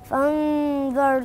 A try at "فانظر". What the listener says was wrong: لا مش فن، فن انت كلت الهمزة. فآ فآ آ الهمزة بين آ مش فن، يبقى انا كلت الهمزة.